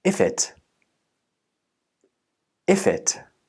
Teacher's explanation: if's last consonant is f, and the next vowel sound is I. These got linked together and became if it.